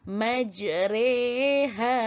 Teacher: Majre, itu yang dikatakan imalah, condong ataupun cenderung baris ra itu kepada baris bawah. Tidak juga berbunyi ri, tidak juga berbunyi ra. Dia condong, cenderung kepada re. Berbunyi re.